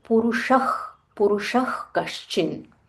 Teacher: whenever Visarga is followed by K, we have to say Purushah